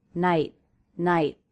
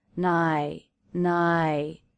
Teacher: however it's not the same as dropping the T nigh nigh the stop T makes the word more abrupt · are you noticing also a stop T at the end of the word night I'm not releasing the sound night night however it's not the same as dropping the T